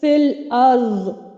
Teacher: پہلا ساکن جو حروف مدہ ہے اس کو ہم گرا دیں گے، یعنی یا مدہ کو ہم گرا دیں گے۔